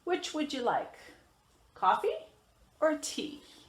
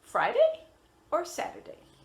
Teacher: which would you like and then we have two choices so we're gonna rise on the first one and fall on the second one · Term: rise and the fall